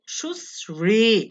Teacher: প্রশ্ন, র দ্বারা শ্রাবণ, শ্রাবণের তালব্যর সাথে যে রফলা আছে, এই তালব্যের সাথে রফলা থাকার কারণে তালব্য হয়ে যাবে দন্তস্বর মতো